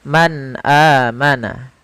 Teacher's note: Menjelaskan huruf yang dibaca jelas, yaitu suara nunnya harus jelas. Tidak boleh ditahan. Tidak boleh man amana. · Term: izhar